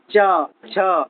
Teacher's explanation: मुंह में जो तालु होता है ना जीभ के ऊपर वाला भाग वो तालु इसमें च वर्ग आता है उच्चारण करना है खुद से च पता चलेगा जीभ जो है ना तालु से जा के टकराता है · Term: तालु वर्ग